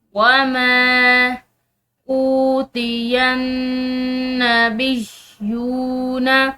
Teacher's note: یہاں پر نون مشدد ہے تو اس نون مشدد پر ہم غنہ کریں گے۔